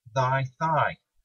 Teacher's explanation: at the beginning of both words your tongue and teeth are both doing the exact same thing the difference lies in what's going on in your voice box the th in thigh involves vibrating your vocal cords thus producing